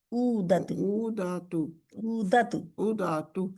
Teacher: नहीं दाल के आगे अलिफ नहीं है दातु उ दातु उ उ को तो खींचना है लेकिन दातु को नहीं खींचना